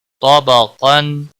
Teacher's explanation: نون ساکن کے بعد حروف اخفا آیا اخفا حقیقی ہوگا گنہ کے ساتھ پڑھیں گے